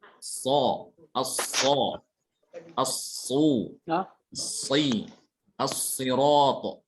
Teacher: Ketika dalam keadaan dhammah. Dan tebalnya huruf shad itu bukan dengan memoncongkan bibir, tapi dengan menaikkan pangkal lidah.